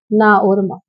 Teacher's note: यह हमारे पंचमा अक्षर होते हैं और यह नाक और मुंह से बोले जाते हैं।